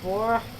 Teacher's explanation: Os goianos, gente, especialmente do interior, vão falar porca, bem com R bem gutural, é chamado de R caipira